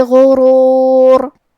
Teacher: کلمت غرور میں غین کی ادائیگی حلق کے اوپر والے حصے سے ہے، غین حروف التفخیم میں سے ہے، تو ہم یہ حرف کو بھاری آواز میں پڑھیں گے. آخری میں را پہ رکیں گے تو اس پہ جزم سے رکیں گے، لہذا یہاں را کا حکم ہے تفخیم، ہمیں حرف الراء کو موٹی آواز میں پڑھنا ہے.